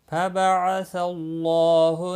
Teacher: اللہ کا لام زبر کی وجہ سے پر پڑا جائے گا، اس کے اوپر کھڑی زبر بھی ہے، ایک الف کے برابر کھینچ کر پڑھیں گے۔